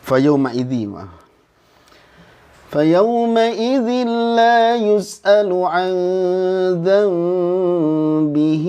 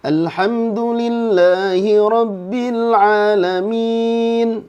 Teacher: Jadi kalau ujungnya tasdid nunnya itu Justru harus ditahan tapi kalau enggak ada tasdid itu jangan ditahan sama sekali Nah